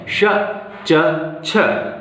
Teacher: श च छ ये तीनों ही तालव्य वर्ण हैं, तालु से बोले जाते हैं, तालु की सहायता से इनका उच्चारण किया जाता है।